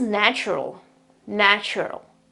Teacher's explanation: the first vowel, the A. It's not pronounced A anymore, it's pronounced E.